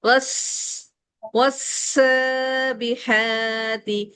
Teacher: والسابحات سیٹی روکنی نہیں ہے زبان سے